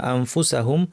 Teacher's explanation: দাঁতকে ফায়ের মাখরাজে এনে ঠোঁটের উপর এনে নাক থেকে গুন্না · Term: ইখফা